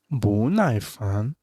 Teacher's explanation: this is bu with the second tone because next one is with the fourth tone